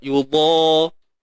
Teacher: Lidah ni kena naik semuanya. Pangkal lidah naik. Depan lidah ni semua naik terangkat. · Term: Huruf dad tebal